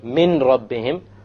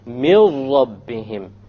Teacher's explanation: So you don't say min rabbihim, you drop it. You drop the noon and you merge the meem with the ra, and you say mil rabbihim immediately. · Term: idgham without ghunna